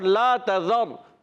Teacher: اور لا تذر، را ساکن، را ساکن سے پہلے زبر آ گیا، را پر ہو جائے گا، موٹا ادا کریں گے